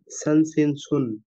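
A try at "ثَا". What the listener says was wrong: তার উচ্চারণ আরেকটু বাতাস বের করতে হবে । সা, সা আ সা কিভাবে উচ্চারণ হয় একটু আপনি যদি আমাদেরকে একটু বলেন তো? বোঝেন মাখরাজ জিভটা যদি বের করেন, জিভ বের করে বাতাস বের করতে হবে। আপনার জিভ মনে হয় পুরোপুরি বের হচ্ছে না অথবা বাতাস বের করছেন না।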